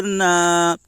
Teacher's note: الف سے پہلے زبر ہے، اس لیے الف مدہ ہوگا، الف مدہ کو ایک الف کے برابر کھینچ کر پڑھیں۔